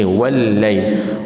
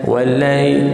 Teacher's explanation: Wa nipis, walla masuk ke dalam syaddah ataupun sabdu lam, tekankan. Jangan wallai.